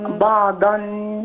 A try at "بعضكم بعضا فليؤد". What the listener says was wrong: مش بعضا، ما ببينش النون هنا. بعضا بعضا فليؤدي.